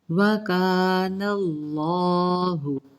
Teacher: वकानल्लाहु, अब यहाँ पे क्या है, कानल्लाहु, लफ्ज़ अल्लाह से पहले ज़बर आ रही है तो हमने इसमें जलालापुर यानी कि अल्लाह की लाम को मोटा पढ़ना है और खींच के पढ़ना है, ऊपर खड़ी हरकत है।